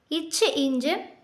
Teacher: இச் இஞ்சு நாவின் இடை அன்னத்தின் இடை